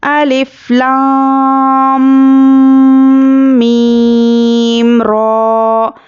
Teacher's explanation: را الف زبر را ہے، کھڑا زبر ہے، برابر ہے الف مدہ کے، اس کو ایک الف کے برابر کھینچ کر پڑھیں گے